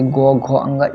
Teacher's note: जैसे गो, घो, अंग, इसमें थोड़ा ज्यादा कंपन उत्पन्न होता है, इसलिए यह सघोष है